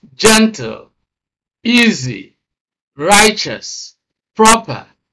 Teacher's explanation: these are adjectives, two syllable adjectives, and they are stressed on the first syllable